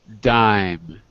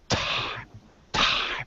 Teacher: Dime is a voiced sound. I use my vocal cords. Time is unvoiced. I don't use my vocal cords.